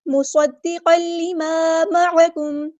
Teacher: تنوین کی آواز کو لام کے اندر مرج کریں گے ، ادغام ہوگا، ادغام بلا گنہ، ادغام کامل۔ مصدقا لما معکم،